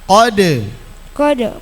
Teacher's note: qolqala sugra huruf qalqalah sukun asli mantul bacanya